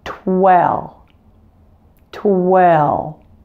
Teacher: Remember to round your lips at the same time you say the T sound.